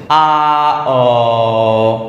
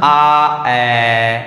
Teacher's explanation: Practically করো সবাই। আ বলতে বলতে তুমি অ বলার চেষ্টা করো, একটু দেখবা জিভটা উপরের দিকে উঠছে, আ অ। অথবা আ বলে এ বলার চেষ্টা করো, আ এ, একটু জিভটা উপরে উঠছে না, একটু নিচ থেকে নিম্ন থেকে উপরে উঠছে, তাই এই দুটোকে বলা হবে নিম্ন মধ্য স্বরধ্বনি।